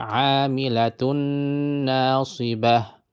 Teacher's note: To fatha, to kasra, or to dhamma, right? You hold it for 2 harakat and nasal and jump to the shadda. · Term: idgham